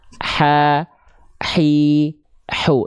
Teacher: H kecil harus berbisik nafasnya Bunda.